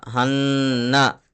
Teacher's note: ذال الف زبر ذا، الف سے پہلے ذال کے اوپر زبر ہے، الف مدہ ہوگا، تھوڑا سا کھینچ کر کے پڑھیں گے. نون کے اوپر تشدید ہے تو غنہ ہوگا. تو ہاں نون زبر ہن، نون زبر نہ ہن نہ.